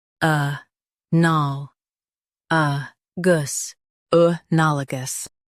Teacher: Emphasize nal and keep uh gus soft.